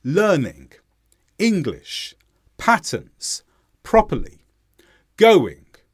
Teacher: Notice how I stressed the first syllable, but I didn't stress the second syllable.